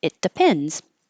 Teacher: You won't hear that T because it's right before the D. Your tongue's in the same place.